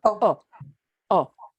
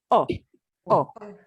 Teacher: this letter O is always pronounced like the long O, but we don't drag it out. We cut it much shorter.